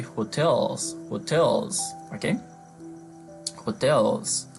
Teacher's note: And we have hotels, okay, we stress the second syllable, don't forget that. Okay, and as the stress is on the syllable where we have the T, so we cannot pronounce the T as a fast D, even if it is between two vowel consonants. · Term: normal T